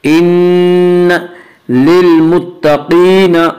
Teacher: क़ाफ को पुर पढ़ेंगे। क़ाफ हुरूफ़ मुस्तालिया में से है।